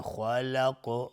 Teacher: خا دهان جمع میشه و زبان به طرف سقف دهان بالا میره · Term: حروف استعلاس